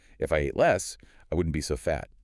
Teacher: The intonation often goes up on the first part, then down on the second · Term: pattern B